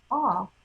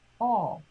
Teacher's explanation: because ah, by its nature, is an open vowel. All is a closed one. You can feel your throat close.